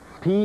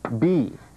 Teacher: P is voiceless, but if you voice the P, you get B. It's the same sound, but P is voiceless, B is voiced.